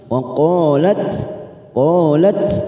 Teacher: Sifat hamesnya mulai hilang karena bertemu dengan huruf tho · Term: idgham mutajanisain